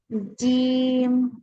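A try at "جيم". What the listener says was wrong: টান কিন্তু একটু কম হয়ে যাচ্ছে, আর একটু টান দিতে হবে, তিন আলিফ জিম।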